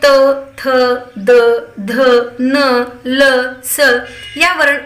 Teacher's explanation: या व्यंजनांचा उच्चार करत असताना आपल्याला आपल्या जिभेचा स्पर्श दाताशी होतो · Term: दंत्य वर्ण